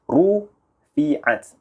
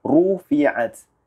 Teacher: Ada pergerakan, ada memoncong mulut kita ke hadapan bila kita sebut huruf ra yang baris depan. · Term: bacaan yang tafkhim